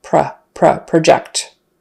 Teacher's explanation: Project, and again, since the first syllable is no longer stressed in the verb, the vowel turns into kind of a schwa, a short U.